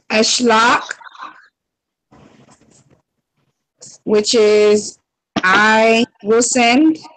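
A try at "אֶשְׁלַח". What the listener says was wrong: Yep. There you go. There you go. Good job.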